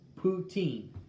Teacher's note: poutine emphasis on the last syllable